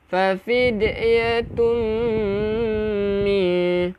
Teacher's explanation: Dengungkan 2 harakat dulu baru bunyi mi.